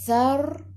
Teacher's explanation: Thar, sasi tu hujung lidah keluar pada gigi depan. Sebelum ra ada baris atas, ra kena baca tebal. Thar, bila tebal, lidah naik ke atas.